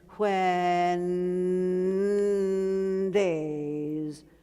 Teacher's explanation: so I connect the N with the D